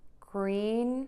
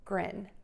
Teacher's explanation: And think about relaxing your mouth. So tense mouth for the E and relaxed mouth for the I.